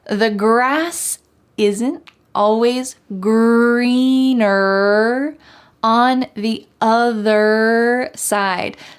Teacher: don't forget that hard R sound in the word greener at the end, and also in the word other. Having that strong colored R sound at the end of the word is essential in American English.